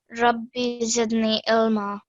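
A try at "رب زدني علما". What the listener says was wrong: So again, what did I say about that sound? Ain, yeah? So ilma. So you have to practice that ain sound, okay?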